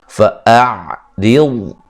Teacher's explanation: را کو باریک پڑھیں گے. ضاد کو موٹا ادا کرنا ہے.